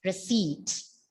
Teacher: P is silent and you bring a long E sound there.